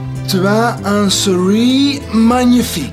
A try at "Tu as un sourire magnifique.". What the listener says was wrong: Non, non, non. Sourire, pas souris. Sourire. Tu as un sourire magnifique.